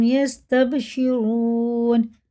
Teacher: را پر ہے اور واو مدہ ہے، الٹے پیش کی طرح کھینچ کے پڑھیں گے، موٹا کر کے پڑھیں گے